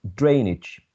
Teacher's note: you can see that the primary stress is on the first syllable